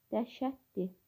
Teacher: Dəhşətli sözünə li şəkilsi di şəklində tələffüz olunur və orada olan l samiti, d samiti kimi tələffüz olunduğu üçün yazılışda fərqlidir, amma tələffüzdə eynidir. Ona görə burada deyir ki, iki fərqli səsin təkrarlanması mövcuddur.